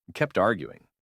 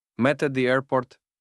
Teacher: вимови закінчень ди і ти в минулих формах перед голосними вони вимовляються більш-менш чітко